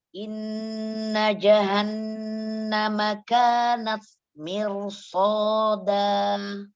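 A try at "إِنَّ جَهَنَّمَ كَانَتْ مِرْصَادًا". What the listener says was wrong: Jadi huruf jim itu Makrojnya di mana huruf jim? Tengah lidah bertemu dengan langit-langit. Ya, dan cara bacanya tidak terlalu kering. Ini terlalu kering, Mami. Tidak juga terlalu becek. Biasa ja. Kuatkan bacanya. Lidahnya ja.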